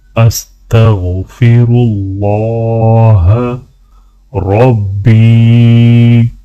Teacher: استغفر اللہ ربی، یا کو تھوڑا سا کھینچ کر پڑھا جائے گا۔